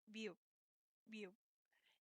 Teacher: this sound is also a bilabial, which means your lips must meet to make the sound. And sometimes this can sound like a P and sometimes even an M.